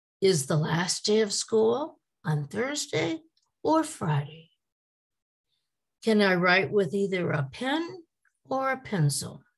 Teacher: the voice does not go up at the end of the sentence with these either or questions